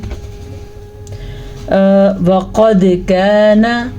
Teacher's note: پھر سے دال پہ کلکلا ہو رہا ہے کیونکہ دال ساکن کے ساتھ ہے. وقد کان کاف زبر الف کا نون زبرنا کانا کاف کو ہم الف مدہ کو کھینچ کے پڑھیں گے نون کو ہم الف زبر کی وجہ سے اتنی چھوٹی سی مقدار کے ساتھ پڑھیں گے.